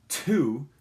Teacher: because it's at the beginning of a word you're gonna feel that puff of air that aspiration